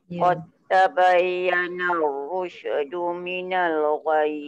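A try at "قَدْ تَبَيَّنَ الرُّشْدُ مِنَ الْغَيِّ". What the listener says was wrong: Shin, jangan bunyi rusy.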